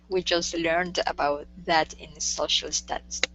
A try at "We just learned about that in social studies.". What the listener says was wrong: With the T, don't worry about this T. Just learned. Yeah, so I think going from this J into this T and L, that kind of threw you off the first time, but after we got rid of that T, the rest of it kind of moves together nicely.